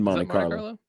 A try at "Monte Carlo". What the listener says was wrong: I like how you just skipped the T there completely on Monte Carlo. pronounce the T. It's Monte Carlo.